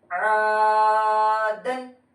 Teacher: تو یہاں پر دیکھیے پہلا عین ہے، تو عین کو ہم کیا عین حلق سے نکالنا بولے تھے، اور الف سے پہلے زبر آ رہا، حروف مدہ ہے، تھوڑا کھینچ کر پڑھنا ہے